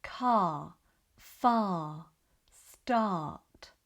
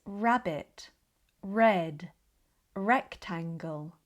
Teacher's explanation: We have two sounds for the letter R in British English. The soft R, which we barely pronounce in words like car, far, start, and the strong R, which we find predominantly at the start of words, such as rabbit, red, rectangle.